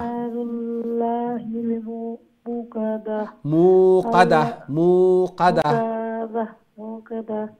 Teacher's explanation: ইনো তা আছে যেটা একটা হা হয়ে যাব স্টপ করলে থামলে ইনো হা হয়ে যায়